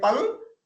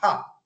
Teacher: after P I put a little bit of aspiration